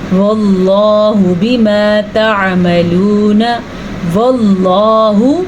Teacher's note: لفظ اللہ کو پہلے زبر ہونے کی وجہ سے پر پڑھیں گے